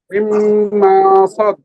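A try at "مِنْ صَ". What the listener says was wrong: আপনি এখানে যে নিয়মটা নুন সাকিন, এটা ঠিক আছে, কিন্তু সাথে একটু টান হয়ে আছে, টান হবে না, আবার বলেন।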